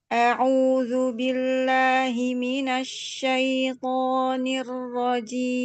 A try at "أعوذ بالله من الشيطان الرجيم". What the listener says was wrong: A'udzu, ainnya dijelaskan harokatnya. A'udzu billahi minasyaitonir rajim.